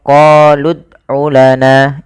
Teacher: qolud qolud dalam membaca Qalqalah ada beberapa kesalahan yang terjadi teman-teman yang pertama yaitu tidak memantulkan huruf dalnya